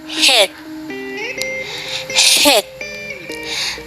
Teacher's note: A third is the glottal fricative, as in the first sound in hit, hit. This sound is produced by bringing the vocal cords into constrictions of close approximation, so that friction is produced. As the vocal cords are not vibrating, we will take it that this is a voiceless sound.